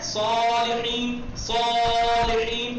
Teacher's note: جی صاد سین کی طرح تلفظ ہوتا ہے، فقط صاد میں آواز جو ہوتی ہے وہ پرحجم ہوتی ہے، بھری ہوئی